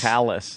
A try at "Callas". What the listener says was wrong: Yeah, except it's Callas. There's no OUS in there.